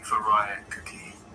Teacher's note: Phonetically, like Furikake, with a stress on the second syllable